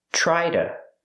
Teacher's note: To is pronounced duh. A fast D.